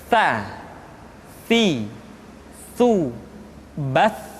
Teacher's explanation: Jadi yang tepat adalah ujung lidah disentuhkan dengan dinding dua gigi seri bagian atas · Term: huruf sa